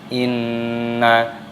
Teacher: nun tasydid dibaca berdengung gunnah